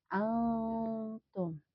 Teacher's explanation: Nun sukun bertemu huruf ta, ini dibacanya samar ya. Antum. Tidak dibaca jelas karena ini merupakan ikhfa.